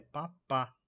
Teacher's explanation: P pá com a sílaba tônica no final